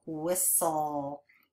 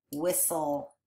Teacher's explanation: Even though that T is kind of silent, isn't it? We don't really hear that T in there.